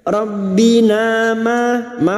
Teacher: fathah diikuti alif 2 harokat mad tabi'i